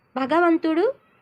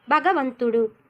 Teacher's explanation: మనకి ముందు భగవంతుడిలో మహాప్రాణం ఉంటే తర్వాత భగవంతుడిలో అల్ప ప్రాణం ఉంది, కాబట్టి మహాప్రాణాలకు బదులు అల్ప ప్రాణాలను పలకడం.